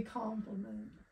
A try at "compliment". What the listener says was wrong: You didn't say it like that. You said it like you were going to say confidence when you say compliment. That's what you said.